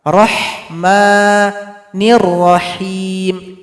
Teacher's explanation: Hirrahma, ma juga, dan ha ini tidak boleh ha besar, tidak boleh rahma, itu salah. Ini ha tipis yang pedas, keluar dari tengah tenggorokan.